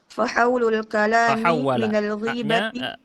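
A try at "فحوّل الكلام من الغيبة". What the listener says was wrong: Fahawwala wawunya tasydid ya. Fahawwalal kalama. Dan bukan ghibah bacanya. Kalau ghibah nanti menggunjing ya. Ini maksudnya al-ghaibah. Gha-nya fathah ya. Fahawwalal kalama minal ghaibati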